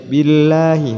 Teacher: Lam jalalah jatuh setelah harokat kasroh, jadi dibaca tipis.